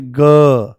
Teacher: परंतु जैसे ही आप बोलोगे ग पूरा झंझना जाता है। जैसे ही बोलोगे क तो कोई वाइब्रेशन नहीं।